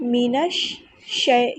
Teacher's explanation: نون کو شین کے ساتھ ملا دینا ہے اور شین کو ہم 2 بار ادا کریں گے کیونکہ یہ مشدد حرف ہے، مینش پھر شئی، ایک مرتبہ پچھلے ورڈ کے ساتھ، ایک مرتبہ اس کی حرکت کے مطابق، مینش شئی، شئی نہیں کرنا، شئی شئی نرمی سے موڑنا ہے، مینش شئی الرجیم۔